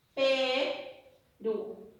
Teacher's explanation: ¿Dónde lleva la mayor fuerza de voz? Ru. En la última sílaba. En la última. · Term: palabra aguda